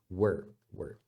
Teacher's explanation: o W tem esse som de U suave também. É um U que você emenda com a próxima pronúncia